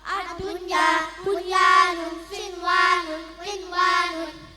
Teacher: Idzhar wajib adalah setiap nun sukun bertemu ya atau wau dalam satu kata, tidak boleh dibaca dengan bunyi sengau